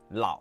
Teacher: It starts low and creaky, then stop, no rise, just the low and stopped. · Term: third tone